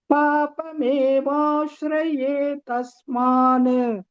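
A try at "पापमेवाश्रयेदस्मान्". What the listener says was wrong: Dasman, not ta. Dasman, dakara.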